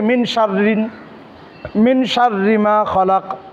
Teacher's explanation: হরফ ইকফার হরফ যদি থাকে নুন সাকিন বা তানবিনের পরে তাহলে নুন সাকিন বা তানবিনটাকে গুন্না সহিত পড়তে হবে নাকের ভিতর লুকায় গুন্না করে পড়তে হবে